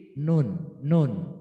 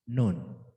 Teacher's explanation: Maju dikit nun. Punggung ujung lidah bertemu gusi.